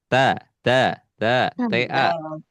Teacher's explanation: jangan dulu terbawa ke huruf to. Nah, tidak dibaca tebal, tapi dibaca tipis.